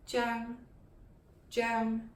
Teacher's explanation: In Cantonese, it's pronounced the high falling Cheung, Cheung.